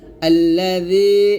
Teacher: এই জালটা জিহ্বাটা উপরের দাঁতের আগার সঙ্গে লাগিয়ে জালটা পাতলা উচ্চারণ করবেন জিহ্বাটা যেন কোনভাবেই নিচের দাঁতে না লাগে বলতে [মিউজিক] হবে তো